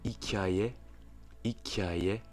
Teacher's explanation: on entend un très léger i entre le k et le a.